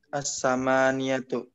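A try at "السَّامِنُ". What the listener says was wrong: Asa bukan as-sama tapi sinnya yang panjang Pak. As-saminu.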